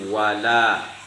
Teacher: Jadi wala itu wajib kita panjangkan satu alif, yaitu mad asli atau mad tabi'i.